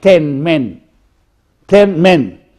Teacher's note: I say it is front, look here, front, between half closed, half open, exactly between half closed, half open. It is short